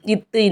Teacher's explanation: மேல்வாய் பல்லினுடைய அடியை நாக்கின் நுனி வந்து பொருந்தும்